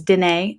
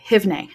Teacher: So don't becomes dine, and haven't is hivne. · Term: negative contraction